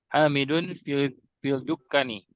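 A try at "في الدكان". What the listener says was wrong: Lamnya lam syamsiyah. Fid. Dukkani. Panjang.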